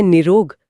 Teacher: और फिर एक नियम ऐसा भी है जहाँ विसर्ग अपना काम करके एकदम से गायब ही हो जाता है, जैसे निरोग शब्द में निहि प्लस रोग। जी हाँ, अगर विसर्ग के बाद र आ जाए तो विसर्ग का लोप हो जाता है।